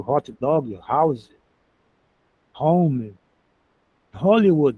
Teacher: Lembra que o re é aquele h fraquinho igual do inglês do hot dog, house, home, Hollywood, né? O H fraco, igual tem no inglês, esse aspirado.